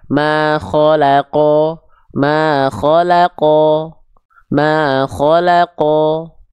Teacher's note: huruf Q di sini ketika kita lafalkan dia berharakat baris atas ketika kita mendapati huruf q berharakat baris atas dia dibaca tebal